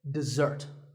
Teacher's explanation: the first syllable is De and the second starts with a z sound we stress the second syllable